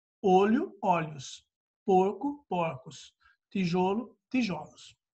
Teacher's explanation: em algumas palavras eu mudo o timbre da sílaba tônica, que normalmente é fechado, no plural fica aberto